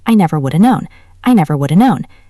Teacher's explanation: Sometimes would've softens to woulda.